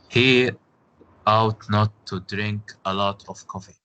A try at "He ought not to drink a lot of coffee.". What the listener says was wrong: Okay, but if you want pronounce it in a correct way, you say ought to, not out to, right? Yes, ought to. He ought to.